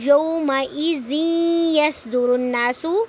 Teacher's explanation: تنوین کو یا کے اندر داخل کر کے پڑھیں گے۔ یصدر الناس، نا پہ نون مشدد ہے تو یہاں پہ غنہ ہو رہا ہے، آواز کو ناک میں تھوڑی دیر کے لیے ٹھہرانا ہے۔ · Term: ادغام